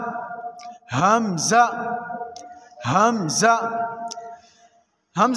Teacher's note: हमज़ा को हलक के नीचे वाले हिस्से से अदा करेंगे।